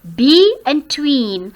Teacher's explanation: So tween is stressed here, second syllable.